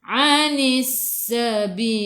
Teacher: Anis sabil alif lam syamsiyah lam dari sukun selepasnya ada sabdu, terus tekan ke dalam sin. Anis sin sifat hurufnya safir kena bunyikan anis sabil.